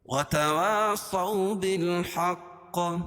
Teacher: صو واو ساکن سے پہلے زبر ہے اس لیے واولین، اس کو نرم آواز کے ساتھ جلدی پڑھیں گے